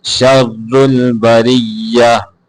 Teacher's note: شر را یہاں پہ موٹا ہے